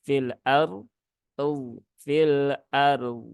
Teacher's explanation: jadi rnya tebal dodnya Jangan diqalqolahkan